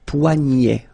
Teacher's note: this combination of ET at the end will basically open the sound